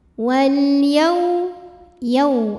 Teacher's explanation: Kemudian ada hukum alif lam qamariyah karena alif lam menghadapi huruf qamariyah yaitu ya. Maka dibaca dengan jelas lamnya.